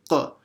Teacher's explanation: No, sorry, not the top of the throat. It comes right at the back of the mouth, extreme back of the mouth, touching the soft palate. So it has that q sound.